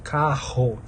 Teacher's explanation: é uma vibração lá no véu palatino atrás